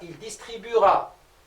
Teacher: Le E, on ne l'entend pas.